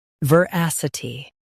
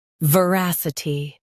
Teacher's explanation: U.S. stresses as, U.K. stresses ras.